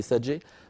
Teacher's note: فهذا الصوت صوت ألف ممالة، إمالة كبرى، وليس صوت ياء.